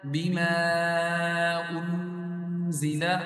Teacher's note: یہاں پہ مد آئی ہے چھوٹی مد، اس کو 3 الف کی مقدار لمبا کریں گے